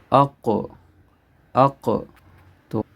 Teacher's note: ہم نے یہاں پہ ایکو کے ساتھ پڑھنا ہے، آواز کو حرکت دینی ہے